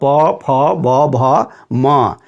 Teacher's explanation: पांचवा बिंदु है ह्रस्व उ, दीर्घ उ और पवर्ग, मतलब प, फ, ब, भ, म, इनका उच्चारण स्थान ओष्ठ है। दोनों ओठों के परस्पर सटने से इन वर्णों का उच्चारण होता है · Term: ओष्ठ्य वर्ण